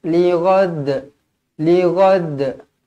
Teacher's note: huruf Dal yang kita matikan yang kita waqaf kan dibaca melantun dekat sini bila dia dekat hujung dia akan jadi Qalqalah kubra